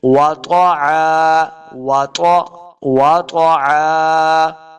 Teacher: ملا کے پڑھنا ہے وجحیما وطعا، لیکن یہاں پہ اب ہم نے وقف کیا ہے تو آیت ختم ہو رہی ہے، وقف کر کے پڑھیں گے تو پھر ہم نے نئے سانس کے ساتھ یہاں سے پڑھنا ہے وطعا، وطع، واو کو تلفظ کے ساتھ پڑھنا ہے، طا حروف مستعلیہ سے ہے، اس کو موٹا کر کے پڑھیں گے